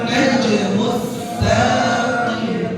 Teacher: An-najmu, ya nun-nya jadi musyaddadah karena alif lam syamsiyah atau idgham syamsi. Karena ada nun bertasydid, maka wajib gunnah jadi ditahan.